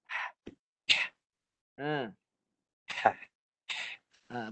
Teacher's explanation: Ha dia nafas saja. Nafas yang dihimpit. Bunyi dia kuat.